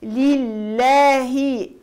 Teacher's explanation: الحمد لي كسرة اللام، لله اللام مرققة في لفظ الجلالة لأنها سبقت بحركة الكسر، لله كسرة الهاء لابد تعطي كسرة خالصة